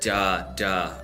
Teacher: it's kind of like a hard D sound but then with a little bit of an R in there